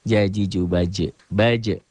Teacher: Qolqolah Sugro yang jadi Kubro karena berada posisinya di akhir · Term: Qolqolah Kubro